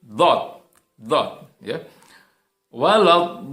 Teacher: makharijul huruf dhad itu adalah dia keluar dengan cara kita menempelkan bagian tepi lidah kita, ya, ke bagian geraham atas, ya. Jadi dhad, ya.